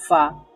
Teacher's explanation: ফা উচ্চারণ করার সময় দাঁতও লাগে ঠোঁটও লাগে